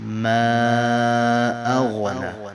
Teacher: اغنا غین کو حروف حلقی میں سے ہے تو موٹا پڑھیں گے